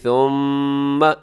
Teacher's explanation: اس کے اندر غنہ ہو رہا ہے، میم مشدد ہو تو غنہ ہوتا ہے